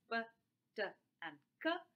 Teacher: when p, t, and k come in the beginning of a word in the onset position, the first speech sound of an onset position, you can actually hear this extra puff of air, which is what we call as aspiration.